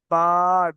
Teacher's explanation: 2 ঠোঁটের ভিজা জায়গা হতে বা হয়